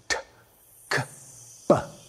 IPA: t k p